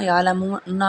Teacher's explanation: عین حرف حلقی میں سے ہے، اظہار ہوگا اور واو مدہ بھی ہے۔